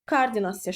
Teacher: O-nun biri düşür, digəri A-ya keçir.